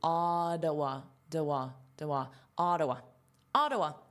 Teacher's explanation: And this is the stress syllable, so you hear it the most. Now notice this is a flap T, so it sounds like a D